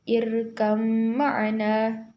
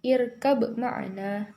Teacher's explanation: dibaca langsung masuk huruf mim disertai gunnah, yaitu berdengung. Contohnya seperti irkam ma'ana, bukan irkab ma'ana, tapi irkam ma'ana, sedikit didengungkan karena gunnah.